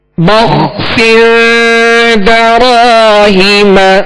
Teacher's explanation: بخسر دراہیم، یہاں با ہے، با کے آگے خا ساکن ہے، خا کو پر پڑھیں گے اور اس کا سکون ہلنے نہ پائے